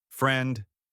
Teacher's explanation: The word friend ends with a clear D sound. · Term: final consonants